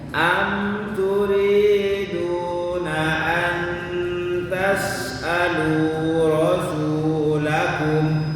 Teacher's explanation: Ingat ikhfa ada temponya dua ketukan, nun ketemu ta.